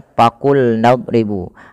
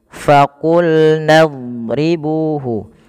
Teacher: ketika melafalkan fa itu bibir kita tidak terlalu lapat dan ada rongga yang kita keluarkan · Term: huruf F